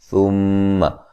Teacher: میم مشدد پہ غنہ ضروری ہے